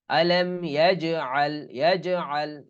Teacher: আলাম ইয়াজআল কিন্তু এখানে হালকা কলকলা হবে, হালকা, বেশি ই করা যাবে না।